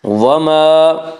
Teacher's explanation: الف مدہ کو ایک الف کے برابر کھینچ کر پڑھیں گے۔